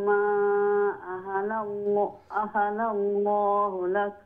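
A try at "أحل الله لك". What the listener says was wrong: আহাল্লাল্লাহ, লামের উপরে তাসদীদ, আবার লামের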